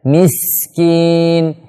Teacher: sin huruf yang memiliki sifat shafir, itu suara tajam